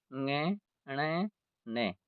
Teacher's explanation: इनका उच्चारण स्थान अपने वर्ग के साथ साथ नासिका भी होता है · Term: नासिक्य वर्ण